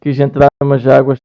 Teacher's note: a substituição do som Z pelo som G na ligação de palavras